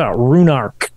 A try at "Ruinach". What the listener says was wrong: No, there's no R. There's not Runark. Ruinach. Well, when in doubt, always pronounce things in the most American way possible. Ruinachs.